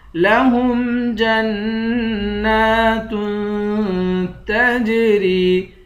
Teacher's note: جیم کو نون سے ملا کر، نون کو ایک الف کی مقدار کھینچ کر پڑھیں گے، نون پر غنہ کریں گے، تا دو پیشتن یہاں پر اخفا کریں گے۔